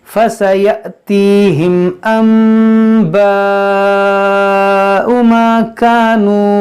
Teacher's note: دیکھیں یہاں پر نون ساکن, یہ میم جو ہے دیکھیں یہاں پر یہ میم کیوں آیا ہے, تو یہاں پر دیکھیں نون ساکن کے بعد حرف با ہے, اس لیے یہاں پر یہ میم آیا ہے. یہاں پر ہوگا اقلاب, یعنی اس نون کو اس میم سے بدل کر پڑھیں گے. اس کو ان باؤ نہیں پڑھیں, اس کو ان باؤ نہیں پڑھیں گے بلکہ میم پڑھیں گے.